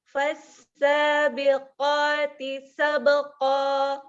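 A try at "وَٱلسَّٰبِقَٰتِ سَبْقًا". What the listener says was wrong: Jangan ditekan. Ringan. Sabeqo.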